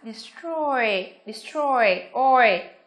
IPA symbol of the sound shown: ɔɪ